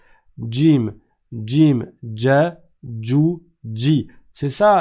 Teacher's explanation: le Jim il est plus en arrière il est pas tout au bout de la langue